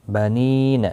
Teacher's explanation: نی یا مدہ ہے، ایک الف کی مقدار کے برابر کھینچ کر پڑھیں گے